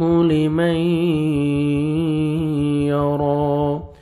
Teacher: لیمئی ادغام ہے نون ساکن کا، دیکھیں نون ساکن کے بعد یا آ رہا ہے، یہاں پہ آپ نے نوز کے غنہ کے ساتھ ادغام کرنا ہے